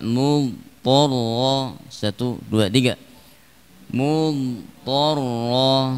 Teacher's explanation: Dhadnya tidak diqalqalahkan dan tidak diidghamkan ke dalam tha. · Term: sifat istitalah